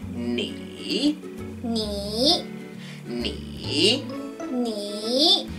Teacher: so you start off higher knee you go make sure it's starts up high falls then comes back up again